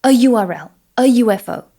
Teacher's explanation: Conversely, we would say a URL, a UFO, because even though the letter U is a vowel, it starts with a Y sound, which is a consonant